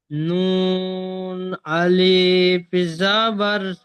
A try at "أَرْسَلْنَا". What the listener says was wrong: আলিফে ভাই টান হয় না। আলিফ জাবার না। أرسلنا। তাহলে নিজটা করেন, হামজার উপরে জবর এসছে।